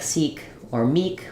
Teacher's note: in a word like seek or Meek when we have single consonant double vowel we're using the tense e sound